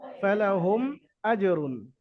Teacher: মিম সাকিনের পরে বা মিম ছাড়া অন্য কোনো অক্ষর আসলে বিনা গুণায় জাহির করে পড়তে হবে। এখানে মিম সাকিনের পরে হামজা আসছে, তো মিমকে বিনা গুণায় জাহির করে পড়তে হবে, গুণনা হবে না, মিম সাকিন ইজহার করে পড়তে হবে, এটা ইজহারে শাফাফির কায়দা।